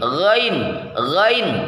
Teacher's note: rongga tenggorokan bagian atas dipersempit lebih longgar daripada ketika mengucapkan huruf Ain